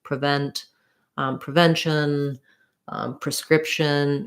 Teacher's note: the second syllable so when the pre is unstressed it's going to be a pr sound